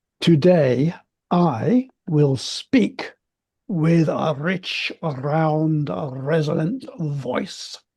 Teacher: he's got a little bit of rolling along on the R, doesn't he?